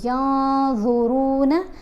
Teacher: نون کے اوپر ہم نے فا کرنا ہے، ینظرون نہیں پڑھنا، نون کی آواز کو ناک میں چھپا کر پڑھیں گے